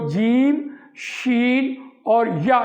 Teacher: یہ تالو سے آ رہے ہوتے ہیں